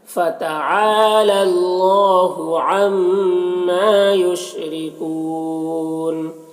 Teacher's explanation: را کے نیچے زیر، را کو باریک پڑھیں گے